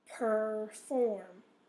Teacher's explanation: the or is in the second syllable so that's where the accent is